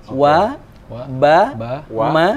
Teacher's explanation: Jadi huruf ba, ma, wa atau wa, ba, ma itu bibir dengan bibir.